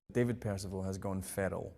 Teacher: It possesses wildly different vowel sounds to most accents in England, and the R is tapped, meaning that the tip of the tongue hits the alveolar ridge, the roof of the mouth, as you are articulating it